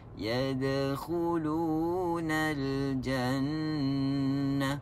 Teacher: Tapi kalau kita lepaskan dengan ringan, yadkhulunal jannah, itulah yang kita sebut sebagai qalqalah sughra